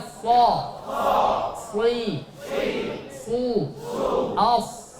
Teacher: Shad tempat keluarnya di ujung lidah kita. Dan dia memiliki sifat isti'la, ditebalkan ketika membacanya. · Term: huruf shad